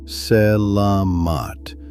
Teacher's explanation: It is flatter than that. Selamat with the middle syllable carrying the weight and every vowel short.